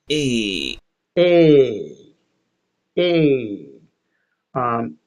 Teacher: He's saying a diphthong. You can hear that there's a change. He goes from one vowel sound and slides over a little bit into an E. It kind of sounds like A.